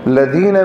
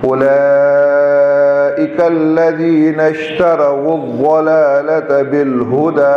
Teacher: لذین میں دال پر سیٹی نہیں ہوگی.